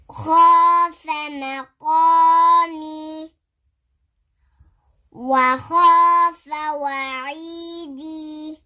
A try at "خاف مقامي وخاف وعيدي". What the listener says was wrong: Why are you stretching it?